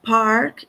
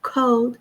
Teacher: Exige um sopro forte de ar nos sons P, T e K quando aparecem no início de sílabas tônicas.